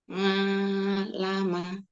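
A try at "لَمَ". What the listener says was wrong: Jangan nga ya. Orang Jawa kadang ngalamin.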